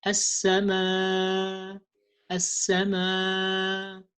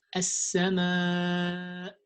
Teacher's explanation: weakening the sound of hamza when you stop on it